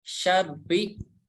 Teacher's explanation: Huruf yang bertasydid harus ada syiddah atau hentakan, dan huruf ro yang berharokat kasroh dibaca tipis.